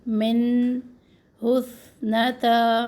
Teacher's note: मिन मखरज पे आवाज़ ठहरनी चाहिए नून की।